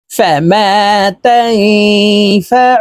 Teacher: এই নুনকে নাকের ভিতরে লুকাইয়া গুন্নার সহিত পড়ব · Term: ইকফা গুন্না